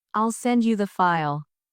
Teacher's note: in the phrase, I'll send you the file, the stress is on send and file.